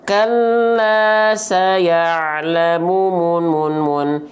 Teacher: Kalau 4 harokat, berarti si munnya ini seperti dilafalkan dengan kadar 4 kali pelafalan.